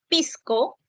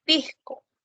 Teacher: la aspiración de la fricativa alveolar sorda, el sonido de la s, que en algunos aparece como si fuese una jota suave. Entonces, en lugar de decir, por ejemplo, pisco, dice pisco.